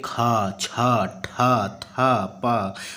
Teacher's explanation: महाप्राण जिसमें वायु जो है ज्यादा निकलती है और स्वास जो है अधिक मात्रा में निकलती है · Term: महाप्राण व्यंजन